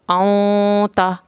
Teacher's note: इख्वा और गुन्ना इन दोनों के रूल सेम हैं, इन दोनों की आवाज़ भी तकरीबन सेम है, नाक की बांस में पढ़ा जाता है, लेकिन सिर्फ नून के छुपाने को गुन्ना और तनवीन के छुपाने को इख्वा बोलते हैं।